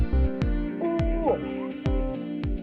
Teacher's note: The characteristic of ooh is the base of the tongue is raised just below the closed position. The lips are rounded and the tongue is set.